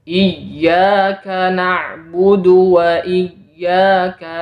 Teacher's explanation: padahal yang sebenarnya Hamzah di sini tidak panjang Oleh karena itu dianjurkan memberikan naber atau hentakan suara pada ya yang bertasdid